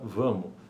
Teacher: cancelamento do fonema S, também em posição de sílaba átona final , observável em palavras como vamos, pronunciada vamo, em sintagmas nominais